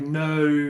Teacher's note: in places like New Zealand they're famous for putting multiple vowels in a word like no you might get four vowel sounds in there the really thick